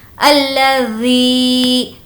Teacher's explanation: ذی کو ہم سافٹ رکھیں گے کیونکہ ذال ہے اور کھینچ کر پڑھیں گے کیونکہ یا مدہ ہے